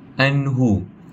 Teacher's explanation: Seterusnya, kita boleh jumpa juga hukum tajwid izhar halqi yang kita boleh jumpa pada anhu. Nun bertemu dengan huruf ha. Hukum membacanya adalah tanpa dengung